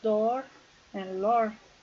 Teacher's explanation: the position is back mid rounded. Characteristic usually long but subject to reduction.